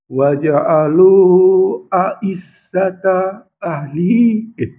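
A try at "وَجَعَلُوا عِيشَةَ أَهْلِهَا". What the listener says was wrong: ahliha ahnya tidak baca ahliha ahliha ah ini yang panjang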